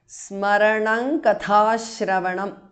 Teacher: anuswara changes to ng which is the nasal of the kavarga